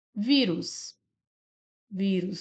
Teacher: Vírus, nós temos aqui uma paroxítona, uma vez que a sílaba mais forte é a penúltima